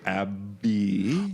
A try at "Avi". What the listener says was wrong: Oh, no, it's V.